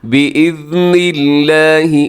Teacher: لفظ اللہ کو باریک رکھیے گا، لفظ اللہ سے پہلے نون کے نیچے زیر ہے